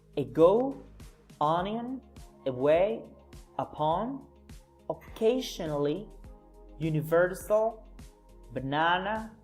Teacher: you have to make a short and soft noise and at the end is a neutral and unclear sound